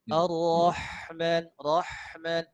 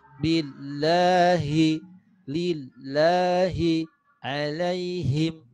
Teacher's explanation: Nah, kalau lafaz Allah atau huruf H lainnya tenggorokan bawah.